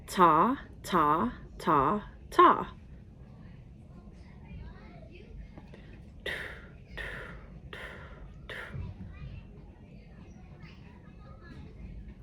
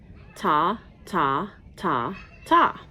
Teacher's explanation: Did you feel how your tongue touched right behind your teeth when you use that T sound?